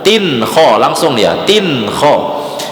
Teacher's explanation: Nah, tin kho itu namanya izhar, tidak dengung.